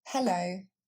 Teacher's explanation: Il faudra du coup bien prononcer le H. Les Français ont tendance à l'enlever ce qui nous donne le hello. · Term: le son he